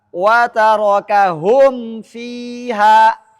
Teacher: Maka bunyi mimnya harus kentara, harus tampak, tidak boleh samar.